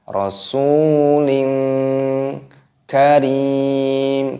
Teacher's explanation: Di sini ada kasroh tanwin yang bertemu dengan huruf kaf, ini dibaca ikhfa